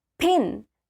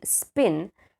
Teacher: there is aspirated p in pin and unaspirated p in spin, and they are different and they exist in two different phonological environments, but still they are connected.